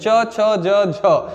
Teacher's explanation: संघर्ष करते हुए वायु बाहर, स्पर्श करते हुए, संघर्ष करते हुए बाहर निकलती है। तो च वाला जो वर्ग होता है वो होता है स्पर्श संघर्षी व्यंजन।